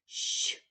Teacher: ш пом'якшений звук ми позначаємо двома рисочками він приголосний пом'якшений